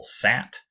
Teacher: sat so that is going to make that a LAX vowel so I have a low front LAX unrounded vowel